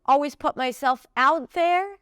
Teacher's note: So I feel like out there is more stressed. How do I know that? Those words are longer and she raises her pitch.